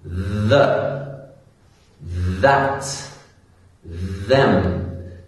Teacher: Can you hear that vibration? That is the voiced TH sound. · So just another way to make sure you're pronouncing the voiced TH sound correctly is when you're saying this, if you just touch your throat and you can feel the vibration. When I say a word like the or them, I can really feel my throat vibrates with the pronunciation.